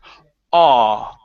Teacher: So when we pronounce the short a sound, okay, right now you're saying aw. Okay, your tongue is pressed down, especially in the back. You're saying aw. Okay, and it's sort of dipping here in the middle.